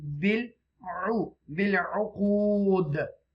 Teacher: you will read with the echo sound, bouncing letter, bil uqud, because this is the waqf mutlaq here.